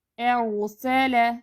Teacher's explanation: جہاں پہ را ساکن ہوگی تو اس میں یہ ہے کہ نہ آواز پوری جاری ہوگی نہ پوری بند، درمیانی کیفیت میں ادھر بھی آواز کو تھوڑا سا آواز چلے گی ادھر بھی۔